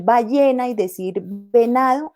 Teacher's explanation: La B y la V, decir ballena y decir venado, es exactamente lo mismo.